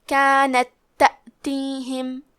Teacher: یہاں حکم ہے ادغام مثلین تام، اور ادغام کا معنی ہے حرف کو حرف میں داخل کرنا، تو ہم تا ساکن کو دوسرے تا میں ملا کے ایک ہی تا اور تشدید کے ساتھ پڑھیں گے